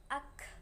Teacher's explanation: kaf di sini punya sifat syiddah ya. Jadi suaranya ditahan dulu, bunyinya hamas akhirnya.